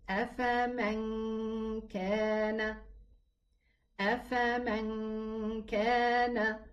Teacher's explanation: All the ikhfa letters has a ghunna, meaning that the noon hid into the kaf, but it left behind its ghunna sound.